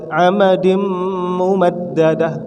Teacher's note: Tanwin berjumpa dengan mim. Apa? Idgham bihunna